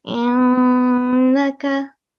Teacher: we have to try to make a strong nasal sound here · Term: Noon Mushaddad